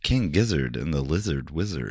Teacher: It's a lot of hard R's for an American accent.